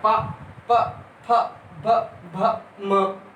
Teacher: जो हमारे ओंठ हैं ये आपस में टच हो रहे हैं, तो इनको क्या बोल देते हैं, ओष्ठ।